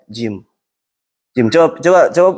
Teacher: jim yang paling benar adalah jim ketika kita menyebutnya kita nggak ngeluarin hembusan dari mulut